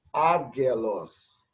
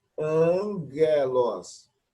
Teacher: Continuando, deve ser lida como angelos, e não agelos. Então, gama, acompanhado de um outro gama, o primeiro gama, ele passa a ter som de N